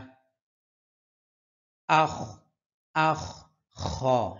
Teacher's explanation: খ জিহ্বার এই হলকের শেষ থেকে আমাদের কণ্ঠনালীর শেষ থেকে উচ্চারণ হয়